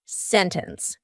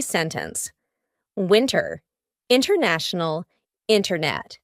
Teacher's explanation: It's fine, but you're going to hear native speakers, when we're speaking quickly, you're going to hear us completely cut out that T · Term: glottal T